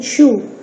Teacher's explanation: a feature of a sound is anticipated during the production of a preceding sound for example lip rounding in shoe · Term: anticipatory coarticulation